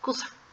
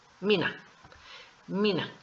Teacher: la I y la U ya estando cerca de consonantes se nos hacen cortitas